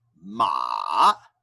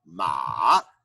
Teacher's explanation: ma, going down and up, ma,